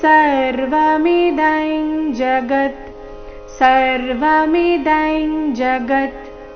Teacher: ಅನುಸ್ವಾರದ ಉಚ್ಚಾರಣೆ ಇಲ್ಲಿ ಚ ವರ್ಗದ ಅನುನಾಸಿಕದ ರೀತಿ